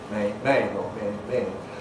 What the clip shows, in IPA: meɪn